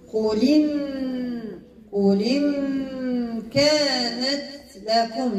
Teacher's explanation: تنقل حركة الهمزة إلى الساكن ما قبلها إذا هذاك الألف اللي كتشوفها هو كرسي ديال الهمزة إذا ما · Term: نقل الحركة